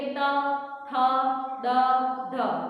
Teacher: દંત્ય વ્યંજનો જેમાં જીભનો સ્પર્શ ક્યાં થાય આપણા આગળના જે દાંત જે છે અંદરના ભાગેથી એને થાય